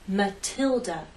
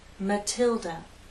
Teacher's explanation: The T is stressed, so we have a true T sound